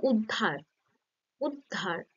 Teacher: মাঝখানে যে সংযুক্ত ব্যঞ্জন আছে সেটার উপরেই বেশি শ্বাসাঘাতটা থাকছে, শুরুর যে উ অর্থাৎ যে স্বরধ্বনিটা থাকছে সেখানে কিন্তু শ্বাসাঘাতটা থাকছে না, ফলে কি হচ্ছে না এই যে শুরুর যে বা আদিতে অবস্থিত এই স্বরধ্বনিটা দুর্বল হয়ে শেষে সেটাকে বর্জন করা হচ্ছে বা লোপ পাচ্ছে, ফলে এই উদ্ধার থেকে পরিবর্তন হয়ে হচ্ছে ধার, শুধু ধা। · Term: আদি স্বরালোপ